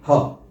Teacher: इसमें जीभ कहीं नहीं लगती है सीधी हवा आती है और वह सीधे सधे सामने से निकल जाती है ह तो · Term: उष्म व्यंजन